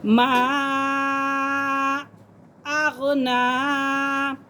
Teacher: نون کھڑا زبر نا، تو اسے بھی ایک الف کی مقدار کھینچیں گے